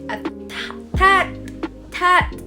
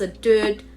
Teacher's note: the sounds that should be made in the back of the mouth, such as k or j, is made at the front of the mouth, producing the t or the d sound. For example, like cat, and they just say it a tat, tat, like that. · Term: fronting